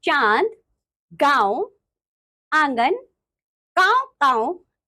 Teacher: इसका चिन्ह ऊपर एक बिंदु होता है। अनुनासिक यानी कि नेजल्स क्या होते हैं? इनका उच्चारण नाक और गले दोनों से होता है